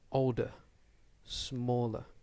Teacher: we need to make sure that we stress the first syllable and we don't stress the second syllable so the second syllable is a weak sound so older smaller